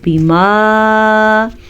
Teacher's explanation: بازر بی آگے میم کے ساتھ الف ہے اور الف میں مد ہے. اس مد کی مقدار 2.5 سے 3 حرکات عربیہ ہے. 2 سے 3 سیکنڈ تک ہم لمبا کریں گے.